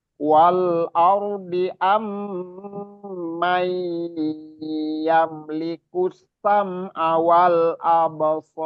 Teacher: perlu ditahan, harus ditahan, wajib ditahan karena itu gunnah musaddadah. Ini bobot gunnah yang paling sempurna itu mim tasdid dan nun tasdid.